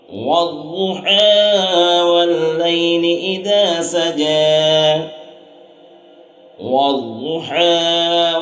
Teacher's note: حا حلق سے ادا ہوتا ہے، اس لیے حا کو حلق سے ادا کریں گے۔